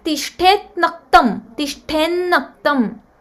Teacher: Ta is changed to na again when na follows ta.